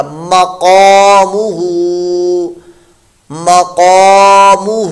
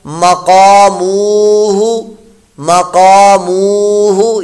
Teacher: میم کو لمبا نہیں کرنا، ہو کو کرنا ہے جا کر